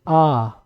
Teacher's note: देखिए पूरा मुंह खुल गया है